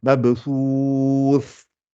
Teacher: Et quand vous arrivez sur le tha à la fin avec soukoun, donc le tha, normalement, c'est l'extrémité des dents du haut avec le bout de la langue. Faites bien ce geste-là pour que le tha sorte bien.